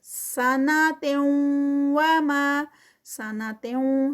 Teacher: تنوین ہے اور پھر آگے واو ہے تو یہاں پر بھی ادغام ہوگا ود غنہ۔ ما پہ 2 کاؤنٹس۔ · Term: ادغام ود غنہ